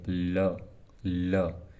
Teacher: ल बोल के देखिए ल ल जीव के दोनों किनारों से पार्श्व से हवा बाहर निकल रही है प्राण वायु इसलिए ल को पार्श्विक कहा जाता है